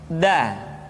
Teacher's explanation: Da diucapkan dengan menyentuhkan ujung lidah kita dengan bagian gusi-gusi dua gigi seri bagian atas.